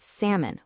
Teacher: We've got salmon, where the L is totally silent